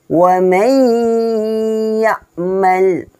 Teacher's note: nun sukun bertemu dengan ya. Cara membacanya dengan didengungkan. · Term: idgham bigunnah